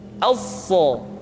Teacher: Huruf sa sama seperti huruf sin dan huruf za, yaitu lidah berada di antara dua gigi seri. As-sa. Untuk memudahkan pengucapan huruf sa, Perhatikan sifat as-safir yang dimiliki oleh huruf sha, yaitu suara tambahan yang terdengar menyerupai dengan suara angsa.